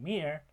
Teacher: However, when we're talking about the labials, p, b, and m are all bilabial sounds, which are made with both of the lips